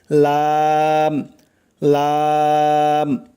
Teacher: তারপরে চলুন 8 নম্বর মাখরাজে, জিহ্বার আগার কিনারা সামনের উপরের দাঁতের মাড়ির সঙ্গে লাগাইয়া, খেয়াল করবেন, জিহ্বার আগার কিনারা সামনের উপরের দাঁতের মাড়ির সঙ্গে লাগাইয়া উচ্চারণ হয় লাম লাম, স্বাভাবিকভাবে উচ্চারণ হবে লাম।